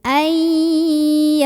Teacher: nun sukun bertemu dengan huruf ya maka cara bacanya Nun nya dimasukkan ke ya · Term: Idgham Bighunnah